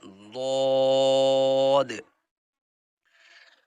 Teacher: یہ ذال کی جگہ پر زبان لگانے سے نکلتا ہے، بٹ اس کی آواز موٹی ہوتی ہے